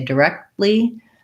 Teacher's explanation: If I say directly, I stop the air for the T, and then I go right into the L sound. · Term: unreleased stops